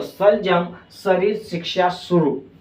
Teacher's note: सलजम शब्द जब आप बोलोगे ना तो आपकी जो जीभ है ये जीभ आपके तालु से टकराएगी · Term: तालव्य